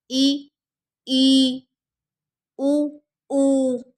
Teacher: संवृत है जिन स्वरों के उच्चारण में मुख द्वार लगभग बंद रहता है